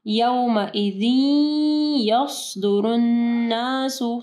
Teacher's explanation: नून के ऊपर शद है, ठीक है, यहाँ पे गुन्ना होगा